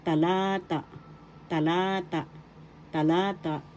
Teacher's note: First syllable ta, second syllable la, third syllable ta. The accent is in the second syllable, talata. The second syllable is la.